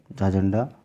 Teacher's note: तो जो इसका ऑप्शन हो जाएगा ऑप्शन नंबर सी, जो झा है, झा झंडा, वह तालव्य महाप्राण घोष वर्ण का उदाहरण है।